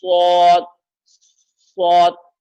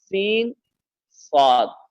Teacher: ہوٹ کو گول نہ کریں، بلکہ اپنے مخرج سے جس طریقے سے آپ نے سین ادا کیا ہے اسی مخرج سے صاد ادا کریں